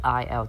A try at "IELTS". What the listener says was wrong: IELTS. Thiếu âm S.